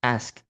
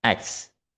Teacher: The text reference is he always pronounced ask as X. The consonant S and K switch position. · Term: metathesis